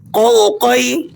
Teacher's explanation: ان کا مخرج آپ نے یاد رکھنا ہے، قوف کو زبان کی بالکل جڑ کو اوپر کوے کی طرف اٹھا کر اس حرف کو پڑھیں گے